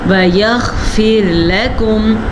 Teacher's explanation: غین کے مخرج کو واضح کر کے پڑھنا ہے. را ساکن سے پیچھے زیر ہے تو را ساکن باریک پڑھی جائے گی